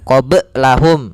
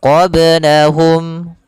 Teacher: Kemudian qablahum, di sini ada ba sukun, yaitu kita namakan dengan hukum tajwid qalqalah. Maka huruf ba di sini harus memantul